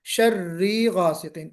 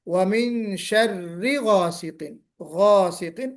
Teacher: इसमें खींच नहीं आना चाहिए, मद नहीं लगना चाहिए।